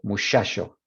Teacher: En Andalucía y México no. Tenemos desafricación de ch en la fricativa sh